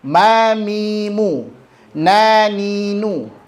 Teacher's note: Jadi pada mim dan nun berharokat ada dengungnya, tapi dia paling rendah tingkatannya. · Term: anqas